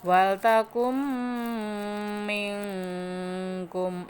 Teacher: Nunnya lebur ke mim gitu ya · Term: idgham bi gunah